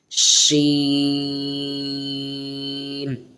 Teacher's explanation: تھوڑی سختی کے ساتھ پڑھنا ہوتا ہے، اور آواز کو سیٹی کی طرح نکالنا ہوتا ہے، اس طریقے سے شین۔